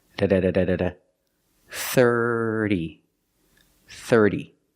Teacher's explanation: the first sound is a th with no voice it's just air put your tongue on the back of your top teeth and just make a little air sir use the ER sound like Burger it's in your voice there's no air just your voice er er together the T makes a fast D sound